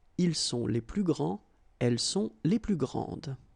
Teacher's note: Okay, don't insist on the final E, but then pronounce this D, grande, and then exactly the same pronunciation, grande. All right, so you don't pronounce this final S